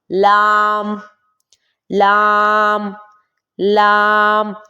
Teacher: طرف لسان جب زواحق سے لے کر ثنایا تک کے مقابل مسوڑوں سے لگے تب جا کے لام ادا ہوتا ہے